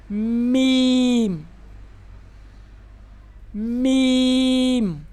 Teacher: मीम बंद होठों के खुशक हिस्सा से मीम अदा होता है। जब हम होठ बंद करते हैं। · بند ہونٹوں کے خشک حصہ سے میم ادا ہوتا ہے. جب ہم ہونٹ بند کرتے ہیں، یہ جو خشک حصہ ہے اوپر والے ہونٹ کا اور نچلے والے ہونٹ کا، ان کو آپس میں ملائیں گے.